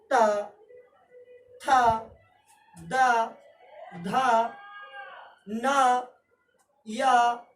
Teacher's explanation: इस वर्ग की सभी ध्वनियों का उच्चारण दांत से होता है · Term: दंते ध्वनियां